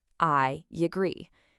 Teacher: So, when you say I agree, listen really closely. A tiny yes sound just appears to connect them.